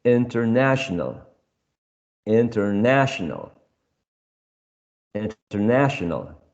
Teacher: the third syllable is the one which is stressed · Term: primary stress